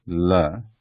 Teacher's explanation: This is a dental sound, la